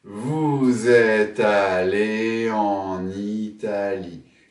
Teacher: 8 syllabes, une liaison en ze, vous êtes, et une liaison en ne, en Italie.